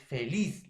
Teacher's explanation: La mayor fuerza de voz está en la última sílaba